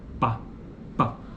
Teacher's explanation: O articulador ativo é o lábio inferior e como articulador passivo temos o lábio superior. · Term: bilabial